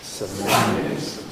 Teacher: The B turns into an M. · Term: nasal release